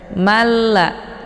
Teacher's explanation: cara bacanya memasukkan dengan tiada berdengung jadi Manya cukup ditekan saja Kemudian langsung masuk ke dalam huruf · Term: Idgham bilagunnah